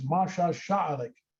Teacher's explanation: because we've got all those A's in there, there's a feature of the O'odham language called vowel harmony that leads to that being pronounced Masha Sha'alik